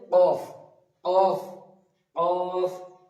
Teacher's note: এটা বলার সময় উপরের তালু, উপরের বলতে পারেন এখানে যে আলাজিবি আছে ওটার সাথে বা জিভের শেষ অংশ উপরের তালুর সঙ্গে লাগিয়ে উচ্চারিত হবে